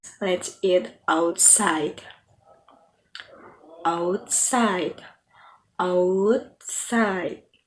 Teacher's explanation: Your voice is only going to fall on the final sound in the final word within the sentence.